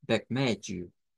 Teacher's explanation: usar la H aspirada, que suena como una J, Bermeju. Bermeju.